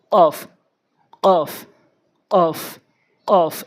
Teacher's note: জিব্বার গোড়া উপরের তালুর সঙ্গে অফ, অফ, অফ, অফ এভাবে উচ্চারণ করবো